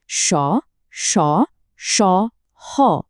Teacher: এই ধ্বনিগুলো উচ্চারণ করার সময় একটা সরু জায়গা দিয়ে বাতাস বেরোতে থাকে। ফলে একটা ঘর্ষণের শব্দ তৈরি হয়। অনেকটা শীষের মতো। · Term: উষ্ম ধ্বনি